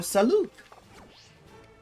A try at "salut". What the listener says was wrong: You don't pronounce the T. It's still French. You're confusing it with the English salute, which is like this.